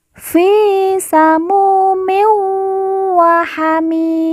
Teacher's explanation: mu kita baca panjang 2 harokat karena di depannya terdapat huruf wawu sukun atau wawu mati.